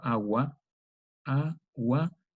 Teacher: Ese VAU, como está unido a una consonante precedente, es un VAU semiconsonante